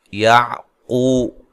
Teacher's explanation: قاف کو موٹا ادا کرنا ہے، وہ مدہ ہے، عین کو واضح نکالنا ہے، با کو لمبا نہیں کرنا۔